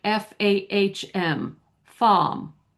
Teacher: if you have an a r that's followed by a consonant sound, that that r is not going to be sounded. So, it will be just like the a in father.